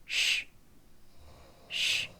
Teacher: 입모양은 입술 약간 앞으로 내밀어 지고 혀의 위치가 보시면 이제 중요합니다 혀 끝이 아니고 중간 혀와 중간 천장 부분이 닿아서 사이로 바람이 나오는 건데요